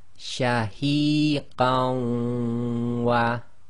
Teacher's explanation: we drop the noon sakin, and that joins to the waw, which you read as if it's got a shadda, so it becomes qawwa. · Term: assimilation